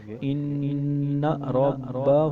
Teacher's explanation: اس کو ہم گنہ بھی کریں گے اور اس کو ہم نون کو دو بار بھی پڑھیں گے